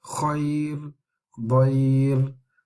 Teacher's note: So both of these ra are read lightly when on these two words, khayr, dayr.